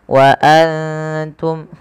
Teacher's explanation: yang tidak berharakat bertemu ta kita baca dengan bacaan Ikhfa yaitu cara membacanya menyamarkan suara nunnya kepada huruf ta